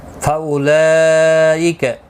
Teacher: لکا کو کھینچنا نہیں. فاولئک، یہاں پر مد متصل ہے، 4 الف کی مقدار کے برابر کھینچ کر پڑھیں گے